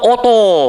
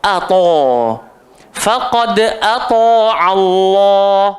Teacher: Ata'a Allah hamzah sampai bila-bila bunyi dia a. Dia tak akan pernah terkesan dengan kegemukan to. Jangan baca oto.